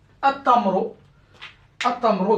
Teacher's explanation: comme le ta c'est une lettre solaire, donc le lam, je dois rien mettre dessus, donc je ne dois pas le prononcer